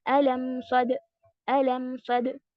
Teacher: अब देखिए टाइमिंग देखिए, अलम सद, अलम सद, यानी कि मीम थोड़ा सा टाइम ले रहा है ज्यादा लंबा, और दाल सद, सद हमने सद, सद ऐसे नहीं किया है क्योंकि वो जल्दी से बंद हुआ। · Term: तवस्सुत